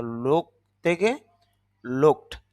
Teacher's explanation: এটা ড উচ্চারণ হবে না এগুলো ট উচ্চারণ হবে